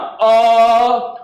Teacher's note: ये हमारा डायरेक्ट आवाज जो हो रहा है कंठ से निकल रहा है